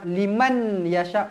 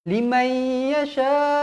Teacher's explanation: Nun kosong bertemu dengan Ya hukumnya Idam maunah mesti dibaca dengung dua harakat